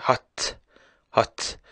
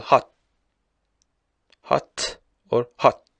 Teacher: at the end you see that there is a puff of air